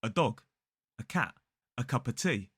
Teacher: the A, as in the article, is replaced by a schwa